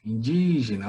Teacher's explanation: Olha o di como sílaba tônica aí